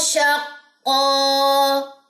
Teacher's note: ایک زبر جو ہے وہ وقف کی صورت میں ڈراپ ہو جاتی ہے، وہ پڑھی نہیں جا سکتی، اور ایک زبر الف کے ساتھ مل کے الف مدہ کا جو رول ہے وہ بناتی ہے.